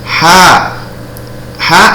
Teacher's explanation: Ha ada alif dibaca 2 ketukan, ini namanya mad tabi'i.